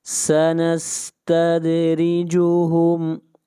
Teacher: دال کے اوپر قلقلہ کریں گے، آواز کو ہلائیں گے۔